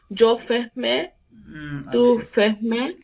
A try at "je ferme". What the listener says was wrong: ferme কেন stop ফেগ a sound কেন শেষে আপনাকে যেটা বললাম যে হ্যাঁ জো ফের